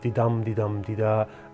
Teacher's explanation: a meter with a didum didum dida unstressed stressed rhythm that goes on for 5 feet, making 10 syllables total per line. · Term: iambic pentameter